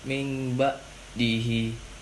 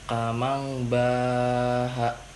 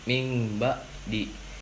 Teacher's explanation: bacaan nun mati atau tanwin tidak lagi dibaca sebagai nun atau tanwin, berubah menjadi bunyi huruf mim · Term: iklab